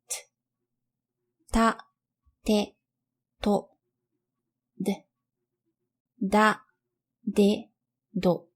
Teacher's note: Next we have denti-alveolar consonants. They occur when the blade of your tongue touches against your alveolar ridge and upper teeth.